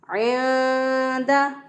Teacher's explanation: आइन को वस्ते हलक से अदा करेंगे, यानी गले के दरमियान से अदा करेंगे